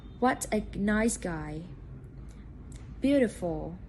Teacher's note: the tone rises at the beginning and gradually falls at the end